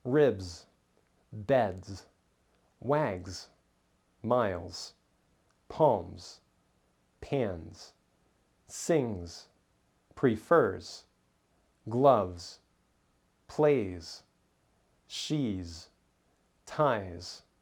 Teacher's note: Here are several words that end with the voiced Z sound because the S comes after a voiced sound